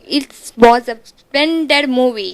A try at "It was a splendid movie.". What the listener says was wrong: It was. Why do you want to break? It was. It was a It was a splendid movie.